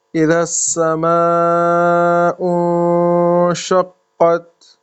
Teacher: یہ نون کے بعد شین ہے تو اخفا کریں گے